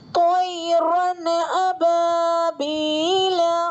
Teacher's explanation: یا ساکن سے پہلے تو پر زبر ہے تو یا لین ہوگا، جلد نرم آواز سے پڑھا جائے گا۔ را پر تنوین، تنوین کے بعد حروف حلقی میں سے حمزہ آ رہا ہے تو تنوین کی آواز کو ظاہر کر کے بلا غنہ کے جلد پڑھیں گے، اس کو اظہار کہتے ہیں۔